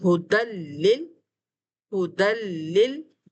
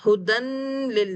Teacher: connection sound کو ہم نے بغیر پل کیے، بغیر غنہ دیے ہم نے یہاں پر پڑھا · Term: وداؤٹ غنہ